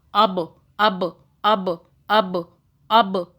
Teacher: اب با پہ قلقلہ کریں، جھٹکا دیں